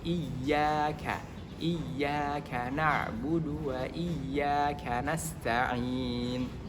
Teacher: tetapi harus ditasydidkan saja tanpa dengung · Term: ya bertasydid